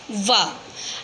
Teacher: दंत्योष्ठ्य वर्ण का सूत्र है वकारस्य दंतोष्ठम, यानी कि जो व वर्ण है वो दंतोष्ठम है। इस व वर्ण को बोलते समय दांत और होठ दोनों का प्रयोग होता है।